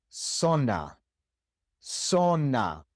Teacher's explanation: in the great majority of the Spanish-speaking world, the Z is pronounced exactly like the S